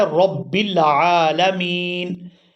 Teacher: با یہاں پر دو دفعہ پڑھی جائے گی، ایک دفعہ جزم کے ساتھ اور ایک دفعہ اپنی حرکت یعنی زیر کے ساتھ، تو یہاں را کا جو سکون ہے وہ با پر ہے۔ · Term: شد